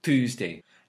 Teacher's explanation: the T is more forward the tip of the tongue going through the teeth